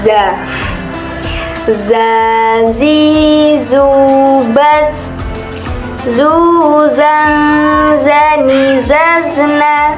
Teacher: Dalam melafalkan huruf ja ini, kita harus mengeluarkan suaranya dengan ujung lisan kita. Diucapkan dengan mengalirkan suara tanpa diiringi dengan udara. Ciri-cirinya yaitu mirip dengan suara denguran tawon.